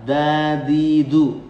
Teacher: huruf dal dalam Al-Quran itu si ujung lidah dirapatkan dengan pangkal gigi atau mulai tumbuhnya gigi atas ya